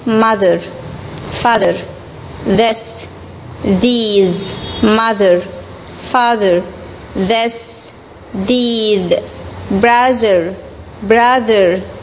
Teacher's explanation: التي اتش صوتها بيتقسم لاتنين، صوت بقول عليه voiced وصوت بقول عليه voiceless. voiced اللي هو صوت التي اتش بيطلع من الحنجرة، في الحالة دي بنطقه ذ · لو جيت كده حطيت ايدك على الحنجرة وانت بتنطق التي اتش هتحس بحركة الاحبال الصوتية بتاعتك